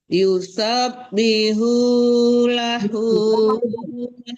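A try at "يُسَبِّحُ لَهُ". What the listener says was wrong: Oh, jangan bihu ya, tapi di tengah-tengah tenggorokan. Yusabbihu bihu lahu. Jangan ditambah. Itu tidak panjang kan? Yusabbihu lahu. Ha yang keduanya, ha besarnya baru panjang.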